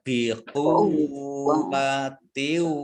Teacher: wawu tasdid ya dibaca double wawunya bikuwa ya, ditekan ya bikuwatiu.